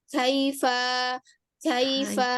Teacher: dia memang syiddah Kaf itu namun jangan lupa dia juga ada sifat Hames di situ ya iya iya Ust jadi ee Ibu alirkan juga nafasnya Kaifa